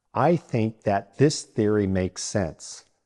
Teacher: Think uses the unvoiced th, and that and this use the voiced th.